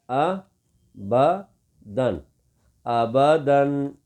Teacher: جب اس کے ساتھ یہ تنوین آ جائے، 2 زبر آ جائیں، تو اس وقت اس کو نہیں کھینچیں گے، فوراً پڑھیں گے